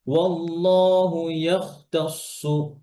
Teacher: খ মোটা তা পাতলা আবার সদ মোটা